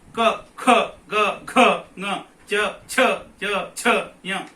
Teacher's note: ಏನಾಗುದಿಲ್ಲ ಹಾರುವುದಿಲ್ಲ ಆದರೆ ಕ ಅಂದಾಗ ಇದು ಹೆಚ್ಚು ಏನಾಗ್ತದೆ ಅಲುಗಾಡುತ್ತದೆ ಇದರ ಅರ್ಥ ಕ ಅನ್ಲಿಕ್ಕೆ ನಮಗೆ ಕಡಿಮೆ ಉಸಿರು ಬೇಕು ಅಥವಾ ಕಡಿಮೆ ವಾಯು ಬೇಕು ಕಡಿಮೆ ಶ್ರಮ ಬೇಕು